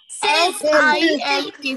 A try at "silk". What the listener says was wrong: Look at your attention. I said pronounce. You are saying S-I-L-K.